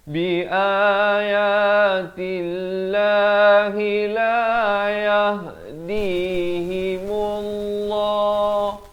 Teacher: Di sini lafaz jalalah dibaca tebal.